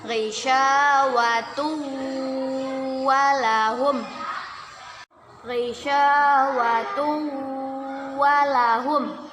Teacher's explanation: Dhammatain bertemu dengan huruf waw. Kita baca dengan berdengung dan ditahan 2 harokat. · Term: idgham bi gunnah